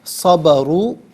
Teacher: جیسے اس کی مثال صبرو، اس طرح نہیں پڑھنا، بہت سے لوگ اس طرح پڑھ لیتے ہیں صبرو، ٹھیک ہے، صاد اور را کو پر پڑھنا ہے لیکن با کو نارملی پڑھنا ہے